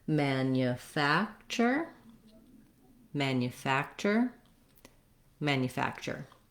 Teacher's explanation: i think the challenge with this word is that this tu has the ch sound and this nu has the yu sound so there's a lot of hidden sounds in the word manufacture · this TU has the ch sound and this NU has the y sound